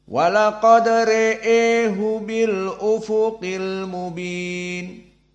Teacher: qiraah al-qisai Ibnu Amir dan khalf hanya imalah ro Wal ha